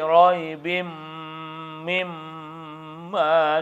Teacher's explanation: Tanwin menghadapi mim itu harus dimasukkan, dengungkan, tahan satu alif dua harkat. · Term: idgham al-gunnah